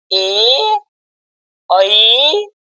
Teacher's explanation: कंठ कंठ तालाव्य से बोला जाता है